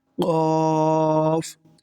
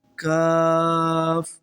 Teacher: قاف کو آپ پر پڑھیں گے اور دوسرے کاف کو باریک پڑھیں گے